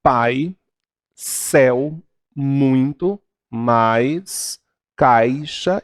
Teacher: decrescente ele vai ocorrer a quando há um decréscimo num sonoro o som vai diminuindo partindo de um som mais forte para um som mais fraco o som mais forte é produzido pela vogal e os o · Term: ditongo decrescente